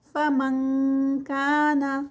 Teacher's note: اخفا ہے لیکن یہ لائٹ ہے، آئی این کے کی ساؤنڈ آئے گی، آئی این جی کی نہیں